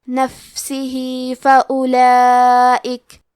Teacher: ہا کے نیچے کھڑی زیر ہے، یہاں حکم ہے مد صلہ صغرا تو ہم اپنی آواز 2 مد کے برابر لمبی کریں گے نفسه فأولئک، کلمت فأولئک میں واو ہے لیکن ہمیں واو کو ظاہر نہیں کرنا ہے، الف کو پیش سے پڑھ کے حرف اللام کو پڑھیں گے، فأولئک۔